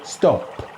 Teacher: So in English we can say stop with no release, but when an Italian says it, always we say stop with the puff of air at the end, stop. We never just leave the lips closed, stop, no.